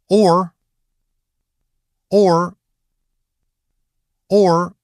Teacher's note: From the very beginning, keep a little more roundness in the lips, then curl it into /r/ at the end. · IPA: /ɔr/